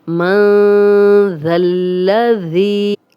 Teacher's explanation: اب یہاں پہ 2 الف ہیں، یہ پڑھنے میں نہیں آئیں گے. ذال کی زبر لام سے ملے گی، لام کو 2 بار ہم پڑھیں گے. ذی، آگے پھر ذال آ گیا ہے اور یہ یا مدہ بھی ہے، جزم والی یا، پیچھے ذال پہ زیر ہے، 2 حرکات لمبا کریں گے.